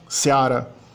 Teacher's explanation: Então, o romeno tem um ditongo com E mais A. · O romeno também é curioso por ter um ditongo cuja parte fraca não é o I, e sim o E. Ia, né? Fica EA.